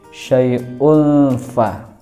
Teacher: Khimat tabi'i syai'ul fa itu ada unfa itu hukum bacaannya adalah ikhfa hakiki, karena domah tanwin bertemu dengan huruf fa, maka dibaca samar